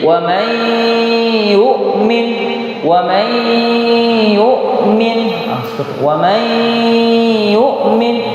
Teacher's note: idghamir dan secara tidak langsung juga lafaz ini masuk dalam kaidah idgham apa idghamun ahsantum jadi wam ymin wam yukmin wam yukmin jadi huruf nunnya ee dimasukkan ke huruf ya yang berarti huruf nunnya tidak disebutkan tapi huruf y-nya yang kemudian disebutkan